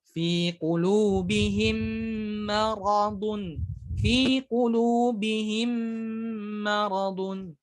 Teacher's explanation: kita baca dengan dengung ataupun langsung masuk ke mim yang selanjutnya disertai dengan dengung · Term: idgham syafawi